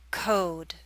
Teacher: The O in code is longer.